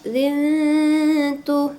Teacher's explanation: Didengungkan tiga dua sampai 3 harakat zintu gitu ya. Itu samar huruf tuya gitu ya. · Nah, zintu tanwin bertemu dengan huruf ta atau tu disebut dengan ikhfa hakiki, maka dibaca samar ya, didengungkan 2 sampai 3 harokat